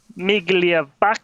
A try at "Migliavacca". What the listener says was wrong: No, you don't say the G. You don't say the G. Migliavacca. Migliavacca.